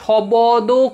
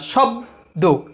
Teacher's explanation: তোমরা যখন শব্দ উচ্চারণ করছো দেখো শবদ করছো না, শব্দ, তাই সব হুট করে থামছে হলন্ত